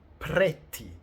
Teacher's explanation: Also, like every double consonant, if you have a double T, you need to take a small break before you say the sounds and prolong the sound itself.